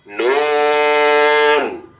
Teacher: জিহ্বার আগা তার বরাবর উপরের তালুর সঙ্গে লাগাইয়া নুন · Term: 9 নাম্বার মাখরাজ